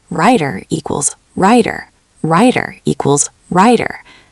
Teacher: Writer and rider sound almost identical in American English because of the flap T.